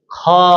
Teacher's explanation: जैसे आप उच्चारण करके देखिए, बोल के देखिए, ख अंत में हकार की ध्वनि निकल रही है, ज्यादा श्वास वायु की मात्रा निकल रही है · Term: महाप्राण